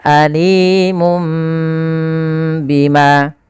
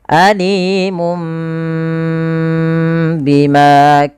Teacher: suara Nun Alimun Bima diganti dengan mim maka Itulah namanya iklab mengganti suara Nun diganti suara mim